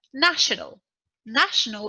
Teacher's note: national is an adjective the stressed syllable is the first syllable